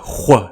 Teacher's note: when it occurs before winia which is usually romanized as hu is pronounced as a velar fricative that is like a hua sound